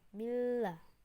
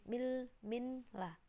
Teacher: Jadi nunnya itu seolah-olah masuk dalam lam. Millah, bukan minlah, tapi millah. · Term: idgham bila guna